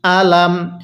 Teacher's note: হামজা এর মধ্যে কোনভাবেই টান দেওয়া যাবে না